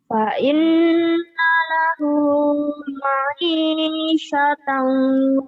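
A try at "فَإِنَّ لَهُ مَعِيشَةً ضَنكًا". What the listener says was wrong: dongkau Dongkau. Itu lagu yang membuat kamu aneh karena motong-motong lagunya. Berhenti aja kalau belajar lagu. Kalau lagi belajar lagu, jangan panjang-panjang. Kalau panjang-panjang lagunya jadi ngalir ngidul gitu ya, jadi nggak jelas.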